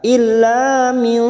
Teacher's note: nun sukun bertemu wa, namanya ikhfa hakiki, kita samarkan bunyi nun sukun 3 harokat.